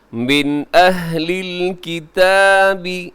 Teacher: من نون ساکن کے بعد حمزہ ہے تو یہاں اظہار کریں گے